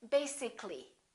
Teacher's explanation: If we add A-L-L-Y, we don't say basically. This A disappears. So the A is not pronounced, and we say basically.